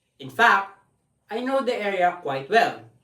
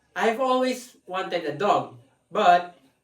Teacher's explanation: there is an intonation spike where the voice gets higher followed by an intonation dip where the bo get lower for